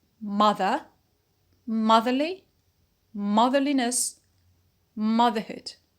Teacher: we notice that nothing happened, no stress shift and no vowel quality change, because the suffix is weak. So we say motherly, motherly. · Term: neutral or weak suffix